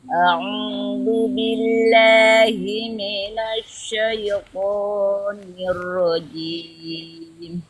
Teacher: itu huruf Sya itu bukan S. Buka tapi lidah bagian tengah naikkan lagi.